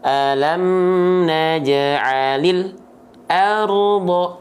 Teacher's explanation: antara bunyi al dengan a nggak boleh ada jeda di sini. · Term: lam sukun